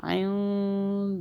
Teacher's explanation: وَلَا تُقَاتِلُوهُمْ عِنْدَ الْمَسْجِدِ الْحَرَامِ حَتَّى، نون ساکن پہ ہم نے اخفا کیا، آگے دال اخفا کا حرف ہے یعنی کہ ہم نے نون کو چھپایا 2 سیکنڈ کے لیے اور زبان تالو کو ٹچ نہیں ہونے دی